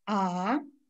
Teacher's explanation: на одной ноте непрерывно. А, второй тон у нас восходящий и изображается восходящей чертой слева направо вверх.